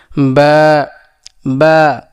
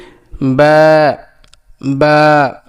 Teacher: বা উচ্চারণ হবে দুই ঠোঁটের ভিজা অংশ থেকে বাটা উচ্চারণ হবে। যেমন কি বা বা, ঠোঁট আবার চাপ দেওয়া যাবে না, বেশি চাপ দেওয়া যাবে না, যে কি বা বা।